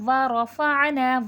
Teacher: عین بھی حرف حلقی ہے، حلق سے ادا ہوگا